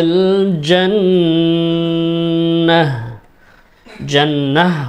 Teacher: ওয়াকফ অবস্থায় এখানে গোলতা রয়েছে, আমরা হা উচ্চারণ করে দেব